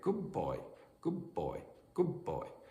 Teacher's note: So the duh at the end of good might become something like a B sound uh to because it's it's similar in pronunciation to the B at the beginning of uh boy. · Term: assimilation